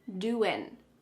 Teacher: What's happening with the G at the end, doin'? It's gone.